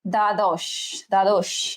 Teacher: আচ্ছা, দ্বাদশ, তাহলে বয়ের উচ্চারণ হবে না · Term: বফলা